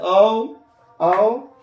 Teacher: इसके उच्चारण में कंठ और ओष्ठ का उपयोग होता है। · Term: कंठोस्थ वर्ण